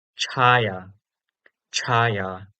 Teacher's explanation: this is just like cha but with a puff of air. In IAST represented by chha. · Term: aspirated version